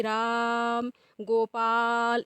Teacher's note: प्रकार जब खींच करर बुलाया जाता है तो वहां पर भी जो मात्रा का समय होता है वह दो मात्रा से अधिक हो जाता है